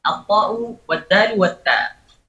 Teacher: Karena sebenarnya dari segi lidah, dari segi ujung lidah, taraful lisan ma'a usulis thanaya al-ulya. Ujung lidah bersamaan dengan pangkal dari gigi atas, gigi depan atas. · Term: makhrajut ta wad dali wat ta